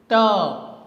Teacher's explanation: The obstruction is done by the tongue and teeth